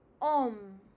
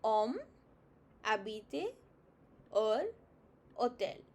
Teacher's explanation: We do not have a h, ha sound as such. It's always silent in French. It's almost treated like a vowel. · you will never pronounce the strong H. You will always start with the second alphabet consonant, whatever it starts after H.